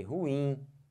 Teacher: Olha a força que eu botei, ruim. Força no in, não força no ru.